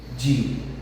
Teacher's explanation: o A e o U, eles se separam na hora de dividir as sílabas. Eles não ficam juntos, eles se separam. Então, se eles se separam, automaticamente ele é um hiato, não é um ditongo.